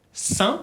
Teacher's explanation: sale un poco de la nariz